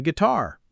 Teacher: guitar is pronounced gee-tar with no U sound in the middle